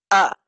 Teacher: তো হামজার মাঝে জাহার সিফত, জাহারের কাজ হলো মাখরাজে প্রেসার দেওয়া। তো হলকের শুরুতে চাপ দিয়ে আমরা হামজা উচ্চারণ করব।